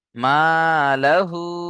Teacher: তাহলে এখানে লাহু বলে দুই থেকে তিন আলিফ টান দিতে হবে। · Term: মাদ্দে মুনফাসিল